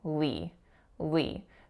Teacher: it's an L going into that tense, slightly diphthongized E sound,